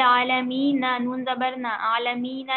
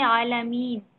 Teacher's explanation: नून पर जो जबर है वो खत्म हो जाएगा।